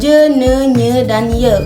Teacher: Bunyi ini terjadi saat lidah menyentuh langit-langit keras. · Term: bunyi palatal